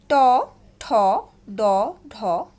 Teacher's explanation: এগুলোর উচ্চারণ স্থান হচ্ছে মূর্ধা, আর উচ্চারণ স্থান অনুসারে নাম হচ্ছে মূর্ধন্য